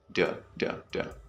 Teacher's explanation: the O sound in do is converted into like a short E sound